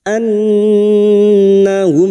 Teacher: Nun yang bertasdid gunah musyadadah kita dengung selama tiga harakat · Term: gunnah musaddadah